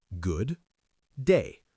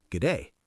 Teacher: But in real life, we say goodday. The D at the end of good almost disappears. It becomes one sound.